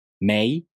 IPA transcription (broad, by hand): mei